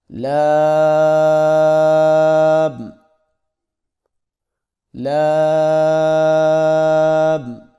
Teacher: زبان کے باریک کنارے کو اوپر والے دانتوں کے مسوڑوں سے لگا کر باریک آواز میں پڑھیں